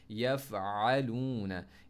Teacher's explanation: ता हमज़ा ज़बर ता, तूना, युस्क़ाउना, वाव लीन आई अब, यफ़अलूना, आइन में कभी भी आ नहीं पढ़ना, अपने सांस बंद नहीं होना